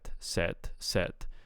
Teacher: I'm hearing a devoiced uh stop on the final consonant of said